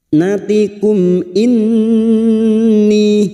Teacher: nun yang bertasdid gunnah musyaddadah kita dengungkan selama 3 harakat.